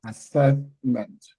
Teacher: assessment stress on the second syllable